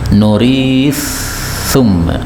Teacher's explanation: tal ketemu tha, ini boleh idgham ya, nuris thumma, jadi talnya hilang.